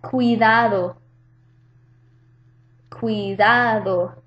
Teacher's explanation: The U and the I form a diptongo, cuidado, so they're in the same syllable.